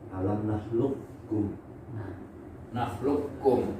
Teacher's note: Kofnya diidghamkan ke kaf. Kof itu lahawi.